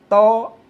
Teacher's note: is like the English d in that, but with tongue touching the teeth